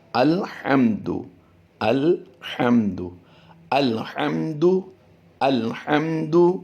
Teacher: میم ساکن کے بعد حرف با اور میم کے علاوہ دال آیا ہے، تو یہاں پر غنہ نہیں کریں گے، غنہ کرنے سے اجتناب کریں گے۔